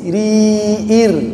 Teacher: ra jika berhubungan dengan kasrah dibaca tipis